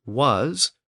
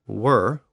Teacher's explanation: In the case of was, we see an original sibilant sound, the S sound, and in were, we see the later R sound